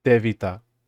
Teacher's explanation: the idea is in between a T and A D